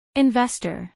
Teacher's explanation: acentuación en la segunda sílaba